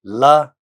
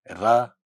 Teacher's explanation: La is a lateral sound, ra is a flap. So la and ra together form one class.